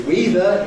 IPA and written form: ˈwiːðə (weather)